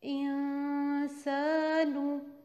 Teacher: ہم نون کی آواز کو چھپا کے پڑھیں گے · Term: اخفا